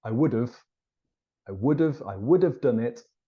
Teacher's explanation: have when it's not stressed Becomes of